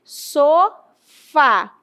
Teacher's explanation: Esta palavra tem acento tônico. Fá é a sílaba tônica, o fa é o forte.